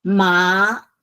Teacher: It's from low up, and it's a second tone up.